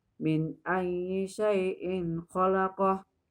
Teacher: Cara bacanya jelas, gak boleh dengung, gak boleh dengung, gak boleh samar-samar. Jelas kerongkongan, ya. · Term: izhar halki